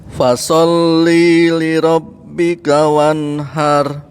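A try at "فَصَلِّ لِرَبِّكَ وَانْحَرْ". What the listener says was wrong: Nah, linya dilanjutin Kak. Ya, jangan dijeda Pak. Jadi seolah-olah kalau jeda seolah dibaca panjang. Tapi jangan fasolli li rabbika tapi fasolli li rabbika.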